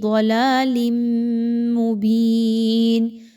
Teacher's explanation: لام کے نیچے 2 زیر کی تنوین کے بعد میم کا حرف ہے، یاد رکھیے میم ہے تو یہاں پہ اچھے طریقے سے ادغام مع الغنہ کیجیے، تنوین کی آواز کو میم کی آواز میں مکس کیجیے، مرج کیجیے اور غنہ کیجیے